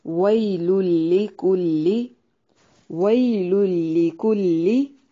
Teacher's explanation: وئی یائے لین ہے۔ یا ساکن سے پہلے زبر ہو تو اسے یائے لین کہا جاتا ہے۔ اس کو نرم ادا کرنا ہے۔